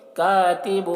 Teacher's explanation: کاتب، یہاں پر تنوین کے بعد حروف یرملون میں سے واو ہے، تنوین کو واو سے ملا کر غنہ کے ساتھ پڑھیں گے، اس کو ادغام ناقص کہتے ہیں